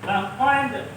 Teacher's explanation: Ingat, di sini ada dal mati, of mati, ya. Nah, dal ini adalah huruf qalqalah. Ketika dia mati, maka bacanya mantul. Laqad, tidak boleh laqad, tapi harus mantul.